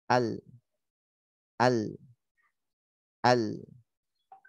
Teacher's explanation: lam ketika sukun dia suaranya nanti mengalir sedikit.